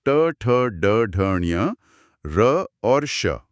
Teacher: ट बोलने के लिए जीभ को पलटना ही पड़ता है। · एकदम सही। यहां जीभ की नोक मुड़कर मूर्धा को छूती है। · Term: मूर्धन्य ध्वनियां